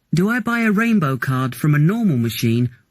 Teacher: Make sure you stress the correct words and that your voice goes up in the first part of the question and down in the second part